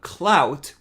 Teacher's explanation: they pronounce the word cloud the same way we do but clout with a different diphthong because it ends with a voiceless consonant so they end up pronouncing it as something like cloak and